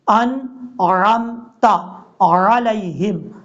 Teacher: نون کے بعد جو عین ہے عین کو بھی کلیئر کرنا ہے. حمزہ کی آواز نہیں آنی چاہیے